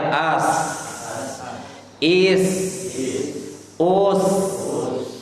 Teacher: ujung lisan bertemu dengan ujung gigi seri bawah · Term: makhraj